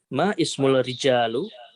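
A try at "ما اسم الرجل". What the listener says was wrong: Nah, perhatikan. Ismu apakah tidak terbaca hamzahnya? Perhatikan.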